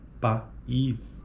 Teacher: em sequências de vogais, como na palavra país, cada uma das vogais tem proeminência acentual constituindo o pico de sílaba. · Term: sequência de vogais